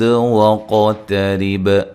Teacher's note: قاف کو موٹا ادا کرنا ہے، تحریب تا کو باریک، را کو باریک، اور با پہ قلقلہ کرنا ہے.